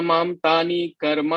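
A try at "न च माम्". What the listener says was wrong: Where is na? Where is na? Na, na. When it is na, read na. Nacha mam.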